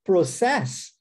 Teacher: der ênfase agora na última sílaba, no ses, e disser process, agora eu estou falando o verbo processar.